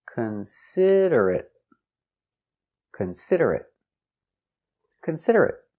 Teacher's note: four syllables the stress is on the second syllable